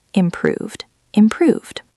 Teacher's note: Improved ends in a V, just like solved, so it gets the D sound.